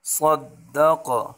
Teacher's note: وقفاً میں قاف پر قلقلہ کریں گے